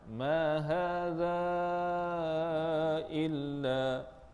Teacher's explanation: Mat jaiz munfasil panjangnya 4 atau 5 harakat.